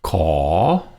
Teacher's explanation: ขอ is rising, comes down and then goes up.